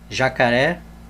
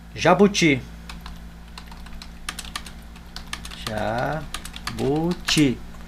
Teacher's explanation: Veja que quando nós separamos a palavra jacaré, a sílaba tônica é a última. Ó, sílaba tônica última, então ela é oxítona.